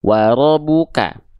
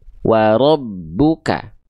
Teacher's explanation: abnya tekan dulu karena ada tasdid